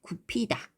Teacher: 브가 흐를 만났을 때는 프로. 그래서 굽히다. 이렇게 편안하게 발음하네요.